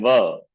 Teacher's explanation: Vakara is Danta Oshta. You say Va, so teeth as well as Oshta, lips are involved. So Vakarasya Danta Oshtam.